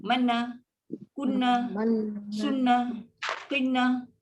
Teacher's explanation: Kalau kita tak bagi dengung, dia akan jadi mana, kunna, sunnah, qinna. Itu maknanya tak ada dengung. Tak ada dengung dan memang sangat pendek.